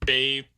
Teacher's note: we get this nice pattern for the A with the F2 going up from the beginning to the end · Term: diphthong